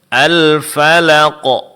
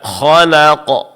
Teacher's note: Seperti Al-Falaq, di sini huruf qaf diqalqalahkan, dipantulkan suara dengan menebalkan bunyi qalqalahnya. Begitu juga khalaq.